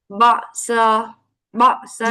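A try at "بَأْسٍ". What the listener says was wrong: جی، اور با کو لائٹ کرتے ہیں. با it's will be heavy. Make it با، باسن. حمزہ جب بھی ساکنہ ہوگا، ٹھیک ہے، تو ساکن حمزہ ادا ہی جب ہو سکتا ہے جب آپ ووکل کارڈز کمپلیٹلی کلوز کر دیں، ٹھیک.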